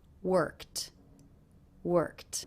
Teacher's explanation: Do you notice that the ED ending here is pronounced as a T sound? That's because the sound before, the K, is unvoiced. So this ending will also be unvoiced.